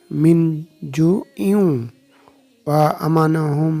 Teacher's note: নুন সেটা ওয়ার সাথে মিলে গেছে, ইউ হয়েছে, ইন হবে না, কিন্তু ইউ মিলে গেছে, নুনের উচ্চারণ হয়নি, ইউ।